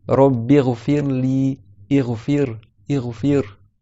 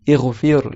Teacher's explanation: Le ra, il est proche du lam, il est tout léger. Ighfir. Ici, il a une soukoun précédée d'une kasra. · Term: muraqqaqa